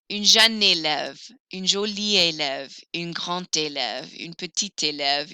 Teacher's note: Feminine forms, I will hear the final consonants.